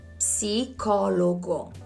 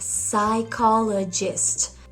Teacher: The P is not pronounced, and this is something that doesn't really happen in Italian.